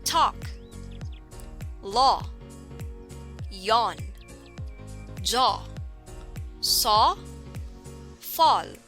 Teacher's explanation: The tongue is pulled back a little and the tip does not touch the teeth. Lips take up the rounded position and it is considered as a tense vowel.